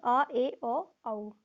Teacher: अर्धविवृत जिसमें मुख आधा खुलता है